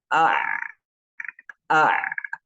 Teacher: Adapun ain dan ha itu dia mencekik gitu, mencekik bunyinya